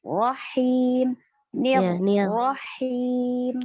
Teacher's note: Huruf ra sifatnya takrir, bergetar.